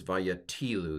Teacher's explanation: The accent's on the second to last syllable.